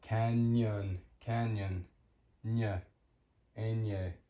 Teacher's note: Canyon, canyon, ñ, ñ makes the ñ sound. Canyon, it's like an N and a Y smushed together